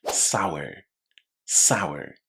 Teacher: I'm not pronouncing that final R